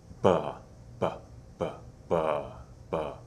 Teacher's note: there's a little vowel sound that's produced with the B, and that sound comes from here. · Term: voiced sound